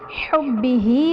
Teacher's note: حبہ میں با حرف قلقلہ مشدد ہے تو یہاں پر قلقلہ خوب جماؤ کے ساتھ ادا کریں گے، ہاں کے نیچے کھڑا زیر ہے جو کہ یا مدہ کے قائم مقام ہے اس لیے اسے ایک الف یعنی 2 حرکات کے برابر کھینچ کر پڑھیں گے۔